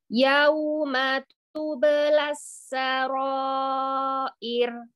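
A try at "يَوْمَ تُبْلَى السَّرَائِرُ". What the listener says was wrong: Jangan berhenti. Yauma. Enggak berhenti. Yauma. Wow, linnya monyongkan ya. Wow, sukun sebelumnya fathah. Lin pada huruf wow itu monyongin mulutnya. Yauma. Yauma.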